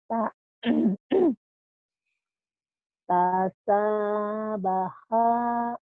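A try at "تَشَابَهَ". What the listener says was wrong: Tasya. Shinnya belum keluar tuh. Tasya. Shin. Tasyabaha. Bedakan antara sa dan sya.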